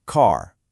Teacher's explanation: It's a long, open vowel sound, right?